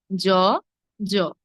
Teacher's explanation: বর্গীয় জ এবং অন্তঃস্থ জ এর উচ্চারণগত কোনো ভিন্নতা নেই